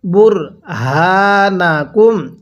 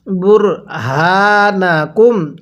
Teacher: এরপরে বুর হাকুম এই হাটা উচ্চারণের সময় স্মরণ রাখবেন সর্বদা যে গোল হা উচ্চারণের সময় গলার মধ্যে হালকা আওয়াজ করে পড়তে হবে